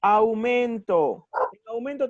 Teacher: tengo justamente una vocal abierta con una vocal cerrada ya entonces van juntas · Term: diptongo